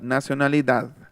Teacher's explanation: Está igualita, nada más que la última D es interdental